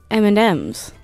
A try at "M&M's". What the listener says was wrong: Why do you put so much emphasis on the end and the second M? It's just meant to roll off the tongue like M&M's, but you're like M&M's.